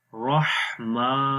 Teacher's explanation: ہا کی آواز گلے کے درمیان والے حصے سے آئے گی ، رحمہ، میم کے اوپر کھڑی زبر ہے اس کو بھی